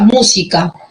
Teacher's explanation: en la palabra música la sílaba tónica es mu